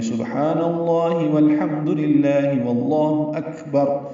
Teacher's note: بیچ میں واو لگا دیں گے اور واو کو لام سے ملا دیں گے